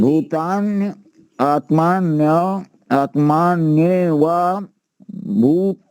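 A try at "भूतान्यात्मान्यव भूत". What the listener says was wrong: देखिए, जब हम इसका संहिता पाठ करते हैं तो वहां हम उसे पद पाठ में नहीं बोलना है। ये हमें पूरा संहिता पाठ में बोलना है, संधि के साथ ही बोलना है। जब हम उच्चारण करते हैं तो वहाँ पद पाठ करते हैं, वहां पर हम अलग अलग शब्द करके बोल सकते हैं, लेकिन अभी इसे हमें पूरा संहिता पाठ में ही बोलना है।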